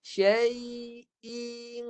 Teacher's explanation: Tu cara bunyikan tanwin yang salah. Tanwin ni, cara bunyi dia jangan masuk hidung dulu. Baris pertama tu kena bunyi dulu.